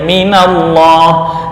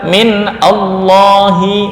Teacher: Menjadi minallahi, ini harokat penolongnya adalah fathah.